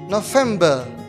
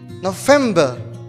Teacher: November. The stress is in the second syllable.